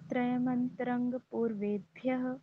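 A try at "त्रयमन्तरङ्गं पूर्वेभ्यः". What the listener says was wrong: हाँ ठीक है, बहुत बढ़िया।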